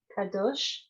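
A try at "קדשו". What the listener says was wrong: Not dosh.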